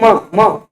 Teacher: करना पड़ म का उच्चार आप ओट करेंगे म म और ओट के साथ साथ आपको नासिका का भी सहयोग लेना पड़ेगा